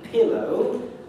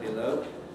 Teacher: Pillow is stressed on the first syllable, below is stressed on the second. And you'll notice that the stress mark is put in front of the P of pillow and before the L of below.